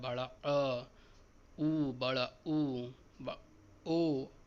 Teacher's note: पश्च स्वर उच्चारण करने पर जीभ का पीछे का भाग उठता है